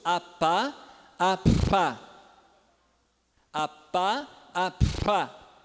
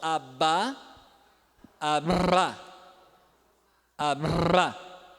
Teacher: A, pá. É igual o P e o B, agora faz ele vibrando e ele surdo e sonoro